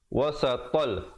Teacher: Wasatal, kemudian tanwin bertemu lam, idgham bila gunnah pula. Kalau tadi idgham bi gunnah masuk beserta dengung, kali ini masuk tanpa dengung. Ya, wasatal, asalnya wasaton, ton tintun, to tanwin 2 di atas bunyi ton, tapi bila datang lam jadi tol.